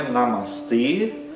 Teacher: esse e é longo, né? Os dois a são curtos